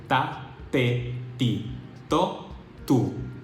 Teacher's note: In Spanish, T sounds like the T in the English word stop. It is not aspirated, unlike the word top. When you pronounce the T in top, you release a puff of air that is not present in Spanish pronunciation.